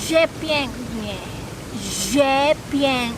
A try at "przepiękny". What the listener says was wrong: No. You're saying ż. This is p, and ż is prze.